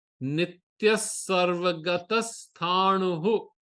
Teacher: But when you do the patha, because the visarga is followed by a sa, the visarga will become a half sa.